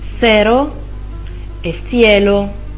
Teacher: La C è un altro suono tipico dell'alfabeto spagnolo. La C si pronuncia appunto con la lingua in mezzo ai denti e mantiene questo suono con 2 vocali, la E e la I.